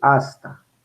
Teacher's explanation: dentalizo la S porque está antes de T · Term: dentalización